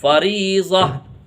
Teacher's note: اس گول تا کو ہا سے بدل کے پڑھتے ہیں۔ اگر لمبی تا آتی ہے جیسے با کی شیپ میں تا ہوتی ہے، اگر وہ والی تا آتی ہے تو پھر تا پڑھی جاتی ہے، لیکن گول تا یہ والی تا ہوتی ہے، اور یہ تا اگر آتی ہے تو پھر اس کو ہا سے بدل کے پڑھتے ہیں، فریضہ۔